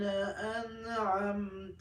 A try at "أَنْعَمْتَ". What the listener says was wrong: أنعمت. Why don't you make Ghunna? An. Ain. An. I'm saying An. Why don't you make Ghunna on An? Izhar.